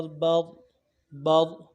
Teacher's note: با را زبر بر، را موٹا کریں گے۔ با را زبر بر، بر۔